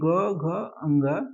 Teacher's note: तीसरा चौथा पांचवा यानी ग घ अंग ये सघोष है